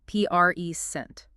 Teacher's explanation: As a noun, a gift, the stress is on the first syllable